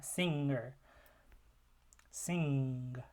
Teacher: at the back, the velar, we have the velar nasal ng